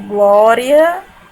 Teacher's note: eu pronuncio com mais força a letrinha A. E o I, ele é mais fraco pela pronúncia. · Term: ditongo